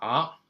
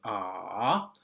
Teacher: first and then um go up okay so it's ah and it has a tone value of two one four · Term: third tone